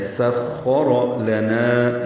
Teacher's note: لام بھی باریک ہے، نا الف مدہ ہے، نا کو 2 حرکات لمبا کرنا ہے